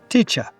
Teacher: And in my accent, from London, we don't pronounce the R on the end of words.